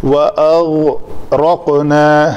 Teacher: جیسے قاف کے اوپر میں قلقلہ کر رہا ہوں، اس طرح غین کے اوپر نہیں کر رہا